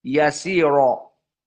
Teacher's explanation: RO di sini dalam keadaan tafhim bagi dua qiraah